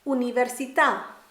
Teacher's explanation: Notice with pronouncing the word for university, there's no y sound, but a clean u.